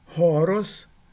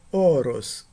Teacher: Na primeira palavra, a primeira vogal ela é aspirada, horos. Na segunda palavra, a primeira vogal não é aspirada, oros. · a aspiração no primeiro caso e a ausência de aspiração no segundo caso distinguem significados